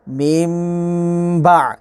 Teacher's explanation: اب یہاں پر دیکھیں نون ساکن کے اوپر یہ چھوٹی سی میم ہے اور ہم نے نون کی آواز کو میم میں بدلا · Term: اقلاب